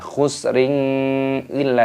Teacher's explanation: Kasrah tanwin bertemu dengan huruf hamzah, dibaca jelas, tidak boleh didengungkan. Khusrin illa, tidak boleh, harus dibaca idhar jelas.